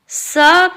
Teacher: स का उच्चारण करते समय जुबान दांतों को छूती है, इसे दंत स भी कहा जाता है।